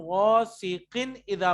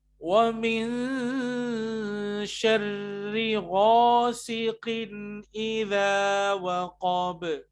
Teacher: تنوین کے بعد حروف حلقی ہے حمزہ, تو یہاں ہمیں اظہار کرنا پڑے گا